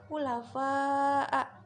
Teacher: mad wajib mutasil karena ada matobi bertemu dengan hamzah dalam satu kalimat, dibaca panjang 6 harokat